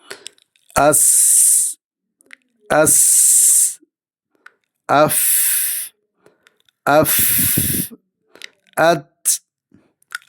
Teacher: അതിനാൽ ശ്വാസം തടയപ്പെടുന്നില്ല പുറത്തേക്ക് ഒഴുകുന്നു ഇതിൻറെ ശബ്ദ സ്വഭാവം മൃതുവായിരിക്കും ഒന്ന് രണ്ട് കാറ്റിന്റെ സാന്നിധ്യം കേൾക്കുകയോ അനുഭവപ്പെടുകയോ ചെയ്യും ശ്വാസോച്ഛ്വാസം ആയിരിക്കും അഥവാ ബ്രീത്തി ആയിരിക്കും [ചീറ്റുന്നു] ഹംസിന്റെ അക്ഷരങ്ങൾ ഫ ഹ സ ഹാ ഷീൻ · സിഫത്തുകളും പരസ്പരം വിപരീതമുള്ളതായ സിഫത്തുകളും ആണ് ഹംസ് എന്ന സിഫത്ത് എന്നാൽ എന്ത് [ചീറ്റുന്നു] അക്ഷരം ഉച്ചരിക്കുമ്പോൾ ശ്വാസം വ്യക്തമായി പുറത്തേക്ക് ഒഴുകുന്ന അവസ്ഥ ഇതാണ് ഹംസ് ഹംസിന്റെ അക്ഷരങ്ങൾ ഉച്ചരിക്കുമ്പോൾ ശബ്ദകോശങ്ങൾ അഥവാ വോക്കൽ കോഡസ് പൂർണമ ായി അടയുന്നില്ല അതിനാൽ